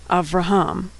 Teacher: There's a shava under the vet, but there's no vowel sound after the vet. It goes right from the V sound to the R sound. Avraham. The shava there is silent.